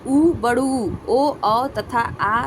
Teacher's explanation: पहला उ, बड़ू, ओ, तथा आ स्वर वृत्तमुखी है क्योंकि इनका उच्चारण करते समय होठों की स्थिति वृत्तमुखी गोलाकार होती है।